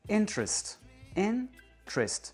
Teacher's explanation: La première syllabe, in, est prononcée plus aigu que les deux autres.